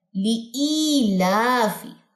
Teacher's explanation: لی لمبا نہیں کرنا, ای لمبا کرنا ہے. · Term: یا مدہ